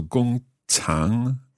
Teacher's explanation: 工 first tone 厂 third third tone.